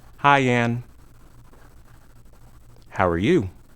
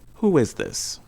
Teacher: vowel okay we usually have uh less pause between words okay we often add a short y or w sound to link the word smoothly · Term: linking a vowel to a vowel